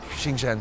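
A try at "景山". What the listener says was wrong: JINGSHAN. I think you said Xinjiang.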